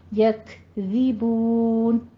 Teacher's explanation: کاف کے اوپر تھوڑا سا ہمس کریں گے، یکذبون. زے نہیں کہنا، ٹھیک ہے، کسرہ کی آواز کیا ہوتی ہے، ای.